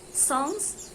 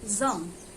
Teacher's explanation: S is voiceless, z is voice. The both consonants are alveolar fricative. Their sounds made by directing air over the tongue and through a narrow space area, the alveolar ridge, creating friction.